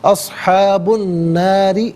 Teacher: با کے اوپر پیش ہے، ناظرین پیش کو الناری کی نون کے ساتھ ملائیں گے اور نون کی آواز کو غننے کے ساتھ ادا کریں گے، کیونکہ نون حرف شمسیہ، حرف شمسیہ وہ حرف کے جس پر الف لام ہو لیکن لام کو پڑھا نہ جائے۔